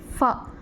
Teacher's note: லேசாக உதட்டை டச் பண்ணி சொல்லும்போது இந்த ஃபாங்கிற வார்த்தையை நம்ம சொல்கிறோம். இதை தான் வந்து அஷ்ஷஃபத்தான், 2 உதடுகளை கூட்டி சொல்கிற வார்த்தைகள்னு சொல்லிட்டு சொல்கிறாங்க.